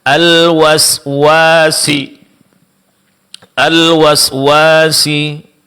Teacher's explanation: Mad alif setelah wau